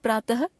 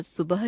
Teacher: हिंदी में प्रातः तथा सुबह शब्दों की अंतिम ध्वनि के उच्चारण में कोई अंतर नहीं रह गया है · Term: विसर्ग